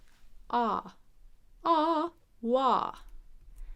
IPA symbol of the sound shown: ɑː